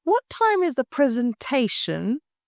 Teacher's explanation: stress the key noun presentation